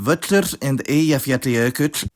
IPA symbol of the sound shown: t͡ɬ